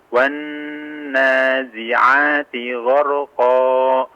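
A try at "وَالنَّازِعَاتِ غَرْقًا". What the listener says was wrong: Afwan, sedikit kepanjangan ya, sedikit saja. Gharqa, qa, nah, dipersingkat sedikit saja.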